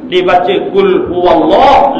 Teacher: lam yang kedua dibaca dengan tebal